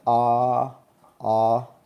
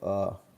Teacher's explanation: So what we do is if we're saying ah ah we're going to move our jaw up a little bit and move our tongue back from ah to uh